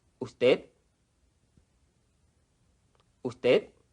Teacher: normally the final D of usted is not pronounced